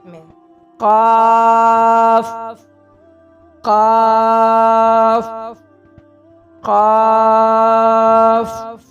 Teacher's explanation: लिखे हैं जड़ जबान तालू से मिलकर, जबान की जड़ जो है तालू से मिलकर कौफ अदा होता है। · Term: बड़ा कौफ